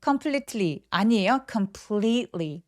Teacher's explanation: seat beach 할 때처럼 굉장히 긴 장음으로 표현해 주셔야 돼요.